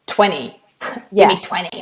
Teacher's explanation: often in American English the T sounds in the middle of words disappear completely